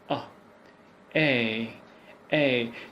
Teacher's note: So the movement is coming from the front to the center of your mouth. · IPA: /eə/